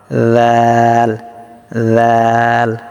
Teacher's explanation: তো জাল নরম হবে, ঠিক আছে, জিহ্বার আগাটা সামনে দাঁতের আগের সঙ্গে লাগিয়ে জাল পাতলা হবে,